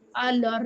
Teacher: अलिफ की हरकत हमने लाम को दे दी, अलिफ को खत्म कर दिया। जब इस पे हरकत ही नहीं रहेगी तो ये खत्म हो जाएगा खुद ही। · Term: नकलुल हरका